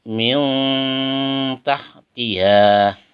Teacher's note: Ada nun sukun bertemu dengan tak, maka bacaannya harus sama-sama. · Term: ikhfa